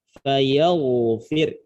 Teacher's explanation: Tapi kalau kita baca dengan cara waqaf dengan sukun, indal waqfi bis sukun, fayaghfiru ini ro-nya dibaca tipis. Kenapa? Karena sebelum ro ada harokat kasroh.